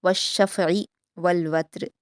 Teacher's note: वल वत्र में ता पर क़लक़ला नहीं करेंगे और बारीक पढ़ेंगे